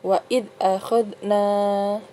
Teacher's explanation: Jadi dibacanya panjang 2 harokat ya, matobi'i.